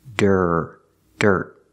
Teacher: The T is a stop T, so stop the air.